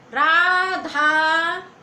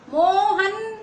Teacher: हम किसी को बुलाते हैं तो आवाज तेज करके खींच के कहते हैं मोहन। माँ को ओ को खींचा, हा ना को धीरे से कह दिया, जल्दी में कह दिया, तो यहाँ पे इसका प्रयोग होता है। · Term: प्लुत स्वर